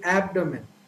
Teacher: So a native speaker tends to pronounce, so the right pronunciation of this word, the stress is given to the first syllable.